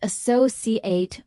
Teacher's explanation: As a noun meaning colleague or business partner, it's pronounced associate with stress on the second syllable